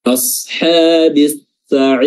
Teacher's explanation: di sini ada alif lam ketemu sin. Ya, sinnya ditasydidkan langsung, lamnya dilangkahi. Ini namanya alif lam syamsiyah atau idgham syamsiyah.